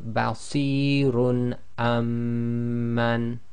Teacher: That's still dhammatain, and that's indicating we're pronouncing it clearly, as the next letter in the next word is hamza. So it's simply, if we read through, basirun amman. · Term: idhar